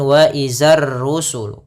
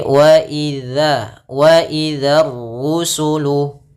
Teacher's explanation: Hati-hati pada lafal dzal. Jangan dibaca dengan zai.